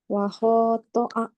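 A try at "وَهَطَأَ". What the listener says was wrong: Ayo, pokoknya kepanjangan. hati-hati jangan dibaca panjang. Karena kita belum sampai bacaan yang panjang.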